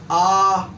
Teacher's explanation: जो मुख का द्वार है पूरा खुलता है, उसे क्या कहते हैं हम विवृत कहते हैं।